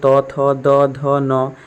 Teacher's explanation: त वर्ग रे त थ द ध न ये सब दंत्य वर्ग